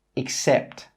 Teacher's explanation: That first E sound is actually pronounced as an /ɪ/.